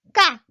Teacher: So ka is a high-pitched, and your mouth is supposed to be big and round. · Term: double consonant